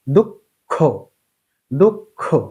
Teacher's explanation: দুইবার উচ্চারণ করার সময় প্রথমে অল্পপ্রাণ হবে পরে মহাপ্রাণ হবে। · কেননা ক অল্পপ্রাণ খ মহাপ্রাণ। দেখুন খ এর উচ্চারণ যখন দিতে হচ্ছে তখন আমরা আগে ক এর উচ্চারণটি করে নিচ্ছি। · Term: দীপ্ত উচ্চারণ